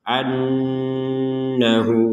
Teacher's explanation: kita dengungkan sama yang sebelumnya juga inallah ini juga sama anahu jadi Nun bertasdid harus didengungkan 100%.